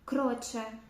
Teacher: в цьому випадку о така коротша звучить коротше і закриваємо ніби її а не протягуємо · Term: кюза закрита